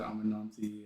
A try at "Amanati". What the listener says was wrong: Yeah, just lose the end.